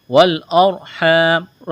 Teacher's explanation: والارحام، را ساکن سے پہلے زبر ہے، را ساکن ہو اس سے پہلے زبر یا پیش آ جائے تو را کو موٹا پڑھا جاتا ہے، یہاں را ساکن سے پہلے زبر ہے تو را کو موٹا پڑھیں گے۔ الف مدہ ہے، ایک الف کے برابر کھینچنا ہے، وقف کریں گے، میم کو ساکن کریں گے۔